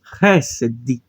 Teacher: o Dalit sem o Dagesh ele vai ter um som daquele D bem suave